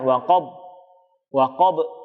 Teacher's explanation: Di sini beberapa kesalahan yang sering terjadi juga adalah pada kalimat huruf waqab di huruf ba. Huruf ba juga punya sifat namanya qalqalah, maka harus dipantulkan. Nah, pantulannya harus terdengar. Waqab, waqab, tidak boleh ditahan.